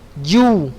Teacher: Ja itu di lidah bagian tengah pada posisi langit-langit bagian atas. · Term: huruf ja